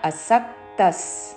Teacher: సా మీద ఆఘాత అసక్తస్, విసర్గ ఉచ్చారణ స